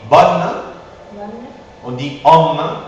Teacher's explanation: La lettre O suivie de deux N, d'accord, ou de deux M, n'a pas de nasalisation, d'accord? On dit bonne, on dit homme, sans nasalisation, parce qu'il y a deux M ou deux N, ok?